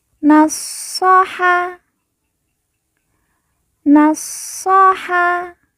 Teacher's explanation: huruf SH yang bertasdid kita baca ditekan dan ditahan dua harakat nasaha nasoha kita ke sebelah yunashihu yunashihu kita ke sebelahnya fadala